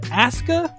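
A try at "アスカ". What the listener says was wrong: WWE's doing one thing right because Japanese pronunciation, you never pronounce the U. Okay, but it's Asuka.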